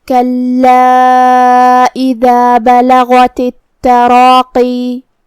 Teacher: جیسا کہ ہاں حرف اللام ہے تو یہ 2 لام ہیں، لام ساکن اور لام متحرک، لہذا ہم حرف اللام کو 2 حرف کے برابر ادا کریں گے. آخری میں الف پہ مد کا علامہ ہے. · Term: تشدید